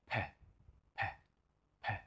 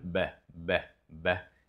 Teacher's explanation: the P I would say is more explosive and the B is slightly less